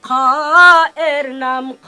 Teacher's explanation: এক মাথা এক লেস, যার উপরে এক নুক্তা, জিহিবার গোড়ার শেষ ভাগ, তার বরাবর উপরের, তালুর সাথে হালকা চুলকিয়ে যার উচ্চারণ করতে হয়